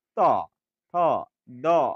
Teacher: আপনার জিহভাটা এসে দাঁতকে স্পর্শ করছে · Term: দন্ত বর্ণ